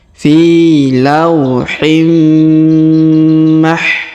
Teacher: Fi lauhim, tanwin in bertemu dengan mim bertasdid, maka tanwin innya menghilang melebur ke huruf mim bertasdid ya. Fi lauhim mah, ditahan dan ditekan dan didengungkan 2 sampai 3 harokat.